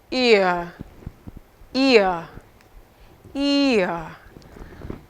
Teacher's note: the tongue glides because it's a combination of two sounds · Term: diphthongs